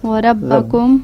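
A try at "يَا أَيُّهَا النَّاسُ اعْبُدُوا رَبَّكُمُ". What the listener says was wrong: نہیں واو نہیں ہے نا, یہ واو بدو کے ساتھ ہی والا واو ہے, الگ سے نہیں ہے.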